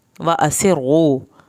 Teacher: سین بے سیٹی کی آواز نکالیں